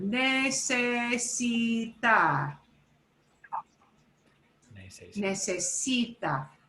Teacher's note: The second from the last syllable gets the punch.